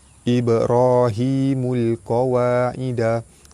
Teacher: Ibrahimul qawaida. Ba mati di tengah kalimah, hukum dia qalqalah sugra, lantunannya tidak kuat.